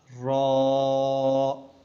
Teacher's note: منہ کو تھوڑا گول کر کے موٹا